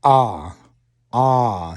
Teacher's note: that vocal cord, fully open sound, is ah. 100% voice.